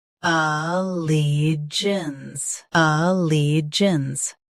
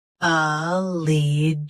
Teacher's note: Stress li. Keep a soft and finish with jins smoothly.